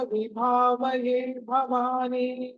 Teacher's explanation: భ మళ్ళీ మీకు మహాప్రాణము ఒత్తి పలకాలి దీర్ఘంగా కూడా ఉంది దానికి తర్వాత భవాని లో కూడా భ అన్నది మళ్ళీ మహాప్రాణం ఒత్తి పలకాలి